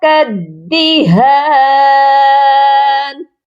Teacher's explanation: یہ بھی غلطی ہو جاتی ہے، کَالدِّہَان، تو لام بھی نہیں پڑھا جائے گا. کاف کو دال مشدد کے ساتھ ملایا جائے گا، سختی کے ساتھ، کیونکہ دال مشدد ہے